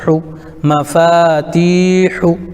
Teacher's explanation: پیش کو جلدی پڑھیں، تھوڑا بھی نہ کھینچیں. معروف پڑھیں، مجہول آواز سے بچیں، پیش کی آواز آگے کو جاتی ہے